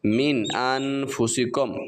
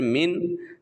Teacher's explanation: نون ساکن ہے تو یہاں پر ہم غنہ نہیں کریں گے اس لیے کہ نون کے بعد الف موجود ہے